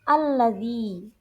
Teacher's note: bacaan panjang yang dibaca panjang satu alif atau dua harakat